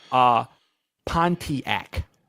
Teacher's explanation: we just say Pontiac. We don't say the T sound.